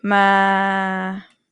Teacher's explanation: So you can hear that it's kind of dip low at the end. Yeah. So it's not entirely flat. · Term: midtone